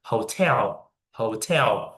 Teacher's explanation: That is the uh stress in the first syllable. But to be honest you need to stress in the second syllable.